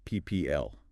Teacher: Instead, it frequently reduces, so the L consonant at the end essentially forms its own syllable. This is called the syllabic vowel. · You might not hear a clear vowel sound between the P and the L. It's almost like the sounds merge together, P, P, P. · It almost sounds like people, but with that middle vowel sound kind of swallowed or skipped. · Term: Syllabic L